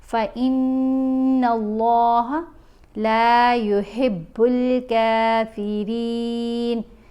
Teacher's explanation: यहाँ हमने नून के ऊपर करना है गुन्ना। गुन्ना करते हुए आवाज़ नाक में पढ़ी जाएगी और एक अलिफ की मिक़दार जितना ठहर कर पढ़ा जाएगा। जब हमज़ा को नून से मिलाएंगे उस वक़्त गुन्ना होगा।